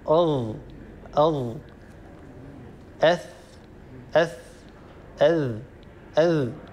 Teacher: ستلاحظون أن هذه الحروف الثلاثة تخرج من طرف اللسان مع أطراف الثنايا العليا. فنجد حروف تخرج من مكان واحد، لكن هناك اختلاف بينها في بعض الصفات. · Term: الحروف المتجانسة